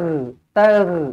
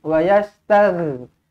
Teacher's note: Huruf ghin dia melibatkan kerongkong, makhraj kerongkong.